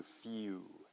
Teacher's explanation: so it's the transition from e to u okay so it's exactly the same sound as a few so